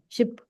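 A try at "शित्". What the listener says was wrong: What is ship? It's not ship. Shit. Say shit, not ship.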